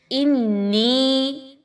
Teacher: حمزہ اور نون کو ملاتے ہوئے نون کی آواز کو ناک میں لے کے جائیے. آگے بڑی مد ہے اس کو لمبا کر کے پڑھیے، مقدار کو کم نہیں رکھنا. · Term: نون مشدد